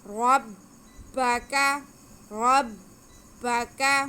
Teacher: उसके बाद बा मुशद्दद है, तो रा को हम बा के साथ मिला लेंगे और बा पे भी ज़बर है, काफ पे भी ज़बर है, खींचना किसी को भी नहीं है। बस रा को थोड़ा रुक के बा के साथ मिलाएंगे और रा को मोटा पढ़ेंगे।